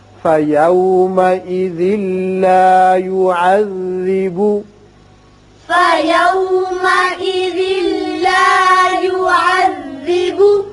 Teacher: یہاں ادغام بغیر غنہ ہوگا. ذال کی تنوین لام سے، یعنی ذال کی ایک زیر پڑھیں گے، نون کی آواز نہیں نکلے گی